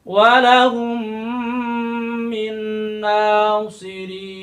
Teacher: Maka terjadi mim dengan mim, disatukan dua huruf, dilebur, diidghamkan.